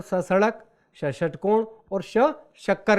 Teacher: ये तीनों ऊष्म व्यंजन हैं क्योंकि इन्हें बोलने से सांस की ऊष्मा चलती है। ये संघर्षी व्यंजन है।